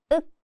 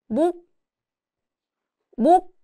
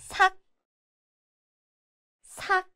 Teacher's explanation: When used as a 받침 at the end, the 시옷 sound disappears and it just sounds like 윽, a light, almost muted k sound. The sound is made at the back of the mouth with the back of the tongue gently contacting the upper palate